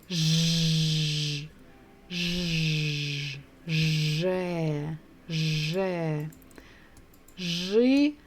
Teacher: In Russian, we have its own sound, so we don't really need to add d in front. So it will be zh, Ж, же, же.